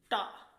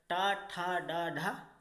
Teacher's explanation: थोड़ी आगे वाली जो जीभ का आगे वाला पार्ट है थोड़ा सा हल्का सा मुड़ता है, और किसको टच करता है? तालु को टच करता है, इसीलिए इसको मूर्धन्य बोलते हैं।